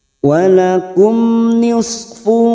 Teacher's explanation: mim sukun bertemu Nun Idhar syafawi dibaca jelas tanpa mendengung